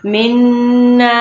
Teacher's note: نون کے اوپر تشدید ہے اور ساتھ میں خالی الف ہے، تو اس لیے ہم نے گننا بھی کرنا ہے اور لمبا بھی کرنا ہے